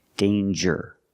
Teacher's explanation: no nasal sound there's no um it's a regular n